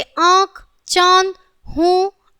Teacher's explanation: नासिका तथा मुख से संयुक्त रूप से निकलने वाले ध्वनि को अनुसिक कहते हैं। इसका चिन्ह चंद्रबिंदु है। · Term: अनुशासिक